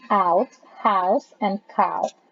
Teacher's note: glides from low to high near the roof of the mouth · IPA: [ aU ]